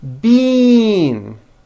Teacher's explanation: The word bean, spelled B-E-A-N, which you eat, is pronounced with a high E sound.